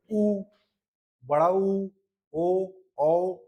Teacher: करते समय जब ओठ क्या हो जाएगा? गोल हो जाए। ठीक है? उसी को बोलते हैं वृत्त मुखी। जिसमें वृत्त जैसे आकृति ग्रहण कर लेते हैं।